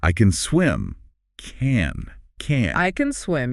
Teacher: The positive word can is usually very quick and soft.